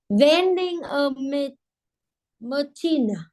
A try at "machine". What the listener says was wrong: Not chin. Sheen. Like shine.